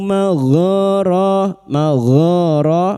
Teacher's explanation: masing-masing dua harakat kita panjangkan mad thabi'i